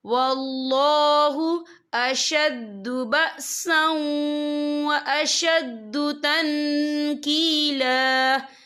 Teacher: واللہ اشد بأسا واشد تنکیلا، یا دیکھیں واللہ، یا اللہ کا نام پر پڑھا جائے گا کیونکہ اللہ کے نام سے پہلے زبر ہے، اور آگے دیکھیں اشد بأسا، یہاں سین کے پر تنوین ہے، تنوین کے بعد جو ہے واو آ رہا ہے، اور واو جو ہے حروف یرملون میں سے ہے، تو یہاں پر ادغام ہوگا، تو ہم اسے تھوڑا سا غنّے کے ساتھ پڑھیں گے۔